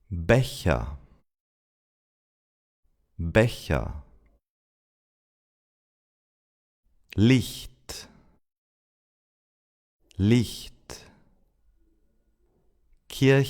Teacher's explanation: Another way of making this sound is saying the initial Y sound as in yes but say it very long E and then you try to say it without voice or in other words you keep the same mouth position but you whisper your vocal cords are not vibrating anymore. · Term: front ch